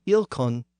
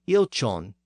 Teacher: The difference between the K sound of the north and the softer CH sound of the south was one of the distinguishing features of these two dialects.